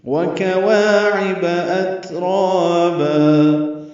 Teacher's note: واو ہونٹوں کی نا تمام گلائی سے ادا کریں گے، کاف باریک ہے، وا الف مدہ، عین وسط حلق سے، با کو جلدی پڑھیں گے.